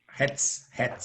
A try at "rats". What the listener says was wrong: The way you pronounce it sounds like hats. And here is rats.